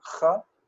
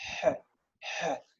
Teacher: kaf is cha, like we hear it's really strong, cha, and het is he, he. It's in the back of the throat.